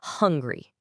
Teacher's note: you can say it with a really strong puff of air on the H. Hungry. That's called aspiration.